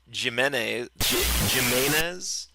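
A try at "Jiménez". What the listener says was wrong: Spanish, J is pronounced with an H sound. That's why they say ja, ja, ja, ja, ja.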